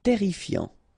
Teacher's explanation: Terrifiant, final T not pronounced. Double R here, so it will open the pronunciation of your E, and then it will be est, terrifiant.